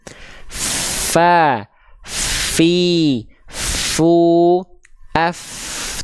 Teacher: huruf Fa ni dia mengalir nafasnya Fa fi fu AF tuh nafasnya ngalir dengan deras kan bukan cuman percikan-percikan nafas